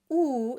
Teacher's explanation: the oo sound is very rounded with the lips. It's placed quite high and quite forward, but it should still have lots of space on the inside.